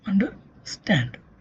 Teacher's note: So, energy is consumed more by stand and then by un and at the end by der. So, the primary stress falls on the stand.